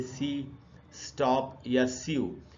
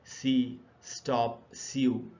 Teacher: सब में हिसिंग का साउंड निकल रहा है, यानी हिस की एक आवाज़ निकल रही है. सी, स्टॉप, सीयू, तो ये हिसिंग की आवाज़ निकलती है सिबिलेंट साउंड्स में.